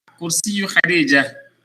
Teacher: because of the ta, you don't pronounce the ta. Instead, you pronounce it like a ha.